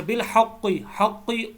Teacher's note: حق قاف جو ہے یہ موٹا ہے، اس کو پر پڑھیں گے، موٹا کر کے پڑھیں گے، آواز آپ کی موٹی ہونی چاہیے